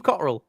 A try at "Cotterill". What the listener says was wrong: You say Cotterill. Yeah, no, don't pronounce the T. The T's fucking a silent word in his name.